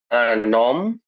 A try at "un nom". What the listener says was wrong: নম হবে না, ওরা বলে ন। এমটা উচ্চারণ করে না, হ্যাঁ? আন ন